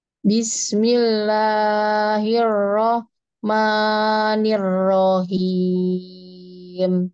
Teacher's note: rohim itu jangan dipanjangkan ronya. Jadi tidak perlu dijeda, apalagi diayun. Kalau diayun itu ayunannya itu saja itu dua harokat.